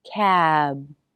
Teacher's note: Lips come together for the B.